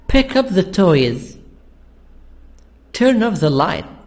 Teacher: So here we have the stress on the verb, preposition, and the noun, the object.